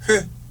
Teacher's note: 입술을 아예 원순 모음이니까 동그랗게 만들어 놓고 시작을 한다고.